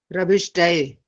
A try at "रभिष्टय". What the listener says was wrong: ए लिखा या य में ए की मात्रा डाली है? य लिखा है ना, य। तो फिर आप रभिष्टये क्यों बोल रहे हैं? रभिष्टय होना चाहिए ना, य।